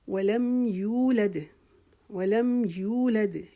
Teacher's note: यू को एक अलिफ के जितना खींचेंगे और दाल पे फिर इसी तरह ये अपनी आवाज़ जो है हमारी वापस लौट के आएगी।